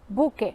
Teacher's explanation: El espacio dejado por la pérdida de segmento es llenado con la extensión de la vocal, en este caso U, con el que al final tenemos buque. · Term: alargamiento vocálico compensatorio